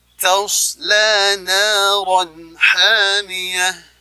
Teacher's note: Kemudian la 2 rakaat di ayun, na-nya juga dibaca 2 rakaat di ayun. Kemudian ada tanwin menghadapi huruf ha, izhar, dibaca jelas